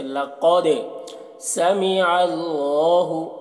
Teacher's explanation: لقد قاف کو پر پڑھیں گے، حروف مستعلیہ میں سے ہے، اور دال میں قلقلہ کریں گے۔ دال میں ایک قسم کی جنبش ہوگی دال کی آواز میں